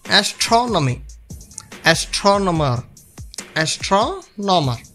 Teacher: Stress the third syllable from the end